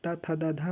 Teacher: ता था दा धा ना बोलते हैं जब, तो दांत पे जाके जीभ सटती है